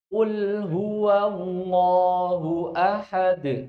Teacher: qul huwa, Allahnya yang tebal, wawunya yang tipis. Jadi bukan qul huwallah enggak, tapi qul huwallahu ahad. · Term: lafdzul jalalah